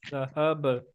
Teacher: با جو ہے جیسے باؤنس کر رہا ہے، بمپ کر رہا ہے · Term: قلقلہ